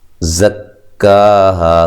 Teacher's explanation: زکاہا، کاف کو باریک پڑھنا ہے اور مد اصلی ہے، ہا مد الف مدہ ہے، زا کو زور کی زا کی طرح ادا کرنا ہے، ٹھیک ہے، اور سیٹی سے ادا کرنا ہے